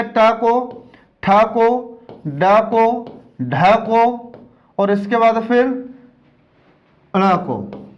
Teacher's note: वे व्यंजन जिनका उच्चारण करते समय हमारी जीभ मूर्धा से स्पर्श होती है, ऐसे व्यंजन को हम मूर्धन्य व्यंजन कहते हैं